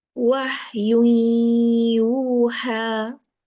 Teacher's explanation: You see the sharp air. This is called hums. This is the quality of ha.